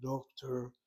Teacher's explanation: you'll notice that the accent in the word doctor is the first syllable.